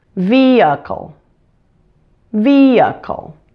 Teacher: you can pronounce it as a short I it or as a schwa sound · The middle syllable is weak. You'll not clearly hear that vowel sound. You can pronounce it as a short I, eh, or as a schwa sound, uh. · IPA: ə